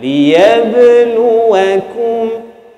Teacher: Di situ ba ada qalqalah.